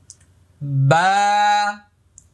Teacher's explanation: বা এক আলিফ পরিমাণ লম্বা হবে মুখটা খালি ফাঁকা হবে